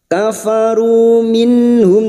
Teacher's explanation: nun sukun bertemu ha idhar halki, nun sukun dibaca jelas tanpa mendengung.